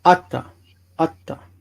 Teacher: Because of the stress. Remember, at the end of the sentence, ata becomes atta.